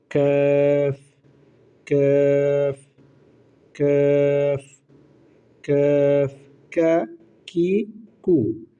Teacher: কাফ হরফ উচ্চারণের স্থান হচ্ছে জিহ্বার গোড়া থেকে একটু আগে বাড়াইয়া তারপর উপর তালের সঙ্গে লাগাইয়া। অর্থাৎ জিহ্বার গোড়া থেকে একটু আগে বাড়িয়ে তার বরাবর উপরের সাথে লাগে।